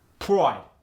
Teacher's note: the long eye gets changed to an oi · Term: oi sound